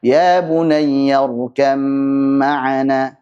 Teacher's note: karena sudah diidghamkan ke mim menjadi mim bertasydid, maka dipanjangkan gunanya